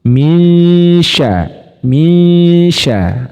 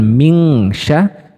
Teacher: Jadi siap-siap ketika kita mendengungkan, mensamarkan bunyi nun sukunnya, maka siap-siap ke makhrajnya shin. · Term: ikhfa awsat